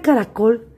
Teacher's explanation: la sílaba con mayor fuerza de voz está en la última sílaba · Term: sílaba tónica